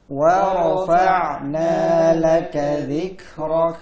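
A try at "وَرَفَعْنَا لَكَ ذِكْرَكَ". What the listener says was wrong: Jangan wa rafa' jangan fa' tebal fa' tipis tarik. Wa rafa'na laka dhikrak.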